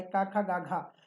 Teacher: तो घा यानी का ग्रुप में आता है, और का होता है कंठ से